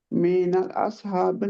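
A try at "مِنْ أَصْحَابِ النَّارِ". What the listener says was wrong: मिन मिन और मिनल नहीं है, मिन।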